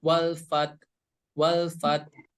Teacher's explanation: dari segi suara terhenti tapi dari segi udara berhembus walfat wafat sehingga huruf tak ini memiliki sifat hams Nah kemudian